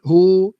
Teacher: ha bagi depan hu muncung mulut, hu.